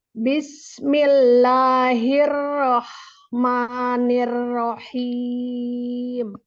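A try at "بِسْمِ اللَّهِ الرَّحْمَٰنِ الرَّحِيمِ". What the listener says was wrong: Tapi kita belum belajar sin sih. Tapi sinnya kurang tipis. Bismillah.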